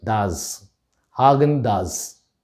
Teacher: brand name should be pronounced as haagen-dazs hagen does the ending of the das starts with a z and then lands on an s